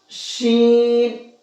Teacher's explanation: शीन के अंदर सीटी होती है। · اس کا مخرج ہے زبان کا بیچ، یہ اوپر تالو سے ٹچ کریں گے اور سیٹی نکال کر کے بولیں گے